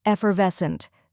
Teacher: effort next is er which sounds like the ER in her then comes VES which rhymes with less and is the stressed syllable finally HT which sounds like UNT in Hunt now let's put